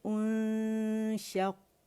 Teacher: شین کا مخرج کہاں ہے؟ زبان کے درمیانی حصے سے ادا ہوتا ہے